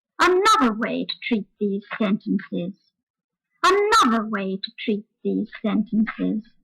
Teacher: And so the word another has its stressed syllable starting very high and falling right down, as I said before. And all the rest of the sentence is said on a low note because it's less important. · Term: the high jump